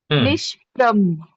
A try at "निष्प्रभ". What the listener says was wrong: भ कंप्लीट. निष्प्रभ. निष्प्रभ.